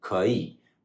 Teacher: When there's 2 third tones in a row, the first third tone changes to a 2nd tone.